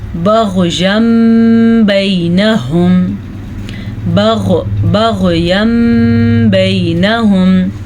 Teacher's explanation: तनवीन के बाद बा आ गई तो तनवीन को हम मीम में बदल देंगे, इसे कहते हैं इक़लाब, यहाँ पे इक़लाब का कायदा होगा।